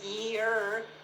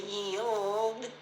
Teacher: if I said year, the tongue doesn't touch. If I say yield, the tongue touches.